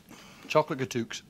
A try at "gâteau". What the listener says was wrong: I mean, I don't mean to make you look like an idiot or anything, but I think you'll find it's gâteau. Yeah, the X is silent. Gâteau.